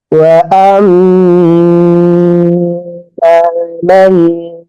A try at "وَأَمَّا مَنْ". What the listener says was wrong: মাটা আর একটু টান হবে। ও আম্মা মান,